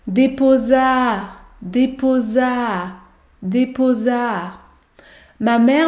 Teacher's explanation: il y a également un enchaînement vous allez devoir prononcer deux fois le son à